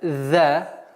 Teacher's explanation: «Иза», буква «зай» межзубная, «за». И ударение в размере 2 огласовок.